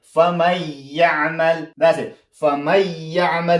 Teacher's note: فمن يعمل دا کسه خو نون ساکن دی نون ساکن شاته یا راغله یا حرف دی ادغام دی نو مطلب دا چې دلته به ادغام کیږي